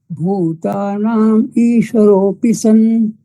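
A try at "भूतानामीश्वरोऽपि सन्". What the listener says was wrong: સંધિ છૂટી અહીંયા આપણે પાડવાની નથી.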